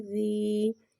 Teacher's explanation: یا ساکن سے پہلے زیر آ رہا ہے، یا مدہ ہو رہا ہے، یا مدہ کو ایک الف یعنی 2 حرکات کے برابر کھینچ کے پڑھیں گے